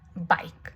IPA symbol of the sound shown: b